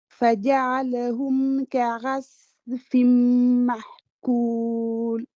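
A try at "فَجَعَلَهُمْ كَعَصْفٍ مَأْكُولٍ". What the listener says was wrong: Voilà, le Hamza avec Soukoun, on le travaillera, puisque j'ai l'impression que j'entends une autre lettre. Mahkoul, est-ce que c'est un Ha? Est-ce que c'est autre chose? En tout cas, mais j'entends pas le A.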